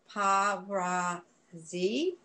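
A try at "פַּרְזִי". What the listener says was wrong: That happens to be a silent schwa, and right, you'll know this because you'll hear it when you learn it. Parzi.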